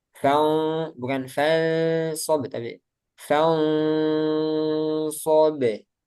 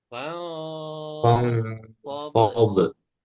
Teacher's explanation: ini nun sukun bertemu sod ikhfa. Karena dia sod tebal, jadi gunahnya tebal juga.